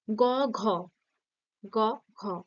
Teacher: কন্ঠে ঠেকছে জীবটা পিছনে চলে যাচ্ছে এবং কন্ঠে টাচ করছে তাই এটা কণ্ঠ ধ্বনি হয়ে গেল তারপর আসছে মহাপ্রাণ মহাপ্রাণ ধ্বনি